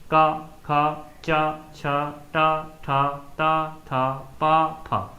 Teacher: इनमें आपकी झंकर ध्वनि आपकी स्वर यंत्रियों से नहीं निकल रही है, एक प्रकार का कंपन करते हुए। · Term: अघोष